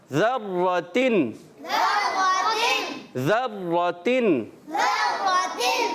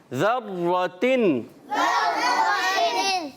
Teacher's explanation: یہاں زال کی ادائیگی کلیئر کریں گے, زا سے بدلیں گے نہیں